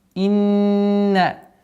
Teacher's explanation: Четкое произношение кесры. Удвоение звука нун. Удержание с назализацией.